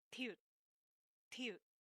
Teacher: So it's more of the tongue right at the roof of the mouth behind the teeth to create the T sound in Korean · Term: alveolar sound